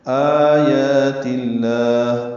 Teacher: آیات اللہ، آمد بدل ہے، 2 حرکات لمبا کریں گے